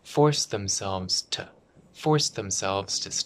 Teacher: The to becomes very small.